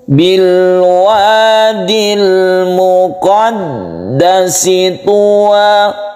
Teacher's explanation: Tasydid huruf itu menjadi 2 harokat, berarti ada 2 dal di sini, sehingga membacanya harus ditahan. Qaf ini mempunyai 1, dal yang bertasydid mempunyai 2.